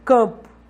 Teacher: Por exemplo, a palavra campo, o C tem som de K, o AM tem som de A nasalizado, como se fosse um A encimado por um tio